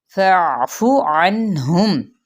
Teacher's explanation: فا کی زبر کو عین کے ساتھ، عین کو وسط حلق سے ادا کرنا ہے، فافو نہیں پڑھنا. ٹھیک ہے، عین کو بھی وسط حلق سے ادا کرنا ہے.